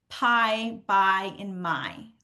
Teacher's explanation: you're going to see my lips coming together, closing, and then opening